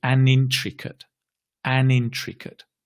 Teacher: It has an intricate plot. Notice we connect an and intricate